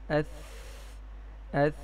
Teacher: ثا کی ادائیگی میں سانس بھی جاری ہے اور آواز میں پستی ہے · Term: ہمس